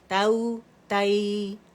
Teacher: تا فتح واو سکون تو، تا فتح یا سکون تائی. ایک کاؤنٹ کے لیے فتح کے لیے آواز اوپر جائے گی اور نرمی سے یا کے ساتھ ملائیں گے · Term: لین